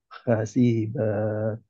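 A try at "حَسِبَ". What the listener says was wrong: sinnya hati-hati enggak panjang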